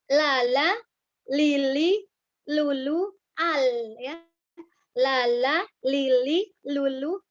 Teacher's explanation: ketika kita mengucapkan huruf lam maka tepi ujung lidahku menyentuh ke langit-langit depan atau ke gusi atas